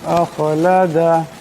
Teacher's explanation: এখানে খা সাকিন, এই খাকে মোটা করে পড়তে হবে